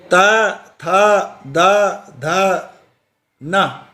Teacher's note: इसी प्रकार जिह्वा और दांतों की मदद से जो उत्पन्न होने वाली जो ध्वनियाँ हैं, जो शब्द हैं, वो शब्द हैं त, थ, द, ध, न। ये शब्द दांतों और जीभ की सहायता से बोले जाते हैं।